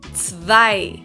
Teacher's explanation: in German the Z is pronounced very sharply, very harsh. So it's like a TS, very short and very strong. So you put a lot of pressure into it.